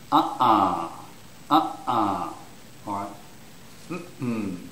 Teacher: So this phonetic symbol here, that's a glottal stop. And you make that by squeezing your throat muscles together.